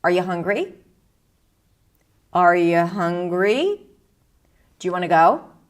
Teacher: This rising intonation is usually associated with yes/no questions.